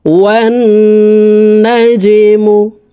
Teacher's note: এই ওয়াও তাসদিদওয়ালা নুনের সাথে নাকের বাসি থেকে 3 সেকেন্ড পরিমাণ গুন্নাহ করে ধরে রাখবো।